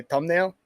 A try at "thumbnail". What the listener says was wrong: Thumbnail? Where's the H?